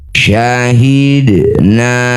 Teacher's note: dal sukun di tengah bacaan disebut qalqalah sughroh. Pantulkan bunyi dal. Pantulannya kecil saja jangan berlebihan.